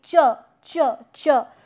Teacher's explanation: but not fully blocked now now what happens in arriate that it begins with a stop but uh it releases as a fricative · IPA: /tʃ/